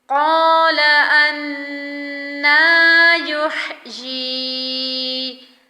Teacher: نون پر غنہ بھی کریں گے اور کھڑی زبر کو ادا کریں گے۔